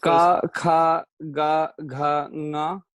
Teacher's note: The first one is unaspirated. The second one is aspirated.